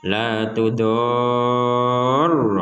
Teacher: Kata tudoro ini yang pertama harus panjang, yang kedua harus ditekan.